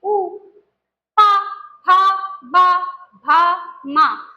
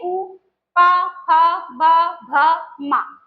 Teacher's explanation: इनका उच्चारण स्थान होता है ओष्ठ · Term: ओष्ठ वर्ण